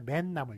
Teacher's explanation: 발음을 맨나물 이렇게 니은이 덧붙거든요.